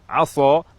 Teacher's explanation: Misalnya kata asa menggunakan huruf sin dengan sifat tarqiq, tipis. Jika berubah menjadi tafkhim, tebal, aso, maka huruf sin secara pasti berubah menjadi huruf sod, dan maknanya dari harapan semoga menjadi bermaksiat.